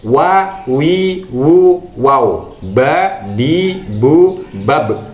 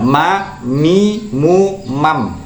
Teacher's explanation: makhraj kedua bibir atas dan bawah ini makhrajnya wau ya kemudian ba dan mim